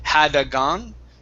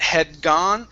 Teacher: so we're not going to finish the d all the way